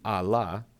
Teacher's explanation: If you combined a and la, it would simply be a la, two separate words, because the vowel sounds do not blend together.